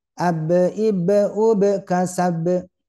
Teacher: betul ada qalqalahnya pantulannya ada tapi masih mengesankan tertahan alias tidak mengalir